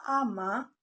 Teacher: Dalam ujaran cepat, kata ama, salah satu vokal a pada akhir kata itu dapat terdengar lebih pendek